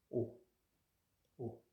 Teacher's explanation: Le O se prononce comme en français, mais un peu plus ouvert.